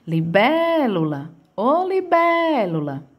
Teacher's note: Sempre a sílaba que mais se arrasta é a bé. · libélula tem a sua antepenúltima sílaba como sílaba tônica, é acentuada, logo eu digo que ela é uma proparoxítona.